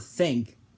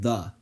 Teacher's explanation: they're both spelled with th but the difference is that it's unvoiced in the word think and voiced in the word the